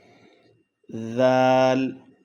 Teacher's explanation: زبان کی ٹپ اوپر اور نیچے والے دانتوں کے تھوڑے سے درمیان میں رکھ کے نرمی کے ساتھ ثا کی طرح ادا کیا جائے گا